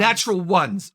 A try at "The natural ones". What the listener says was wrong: No, natural. The emphasis is on natural. The natural ones. Natural ones.